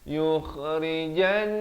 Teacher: Yukha di hujung kerongkong. Yukhrijan, dua harakat di sini, wajibul gunnah, wajib dengung.